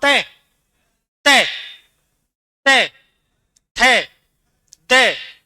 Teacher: ये बोले जाते हैं दंत्य यानी कि दांतों से